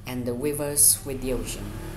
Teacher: ocean has two syllables, and the stress syllables is in the o. Then the unstressed syllables in the sin.